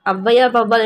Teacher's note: தனித்து வரும் இடங்களில் தனக்குரிய 2 மாத்திரை அளவில் முழுமையாக ஒலிக்கிறது. ஔவையார் வௌவால் என சொற்களில் முதலில் வரும்பொழுது தனக்குரிய 2 மாத்திரை அளவில் இருந்து குறைந்து 1 மாத்திரை அளவில் ஒலிக்கிறது. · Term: ஔகார குறுக்கம்